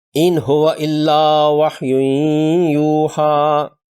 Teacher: نون ساکن کے بعد ہا پیش والی ہے، ہا چونکہ حروف حلقی میں سے ہے، نون ساکن پر اظہار ہوگا ایک حرکت کی مقدار سے